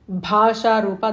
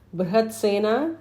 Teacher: Bhasha Rupa, that Bha is Mahaprana. Brihatsena is regular Ba. Bhava Bhava Vivarjita, both Bhas are Mahapranas.